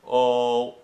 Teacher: So shapes you can use to sort of as a bridge to understanding what to do is the lower register is usually referred to as the O sound. So when you say oh, your tongue is really at the bottom of your mouth